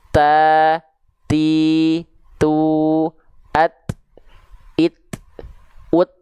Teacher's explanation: Huruf ta juga dia punya sifat hams, ya. Dia punya sifat hams, ya, tapi bukan mengalir nafas, ya. Hanya berupa percikan nafas saja.